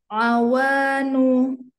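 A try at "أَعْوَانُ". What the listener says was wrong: Nunya jangan keikut panjang ya. Awanu.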